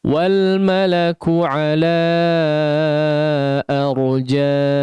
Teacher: Yang kedua di huruf ha di sini arjaiha, ha di sini kita ingatkan 2 harakat saja, jangan terlalu panjang ya, jangan lebih daripada 2 harakat karena dia merupakan mad tabi'i ya, tidak alasan untuk memanjangkan lebih daripada 2 harakat.